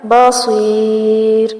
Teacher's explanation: بصیر را باریک پڑھا جائے گا